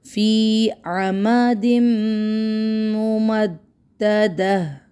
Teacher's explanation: فی عمد ممددہ فی فائدہ فی یا مدہ عمد ممددہ یہاں پہ ادغام ہو رہا ہے، اور تنوین کے بعد یرملون کا میم آیا اور میم بھی مشدد والا تو غنّے کے ساتھ ہی اس کا ادغام ہوگا، پراپر ادغام ہوگا.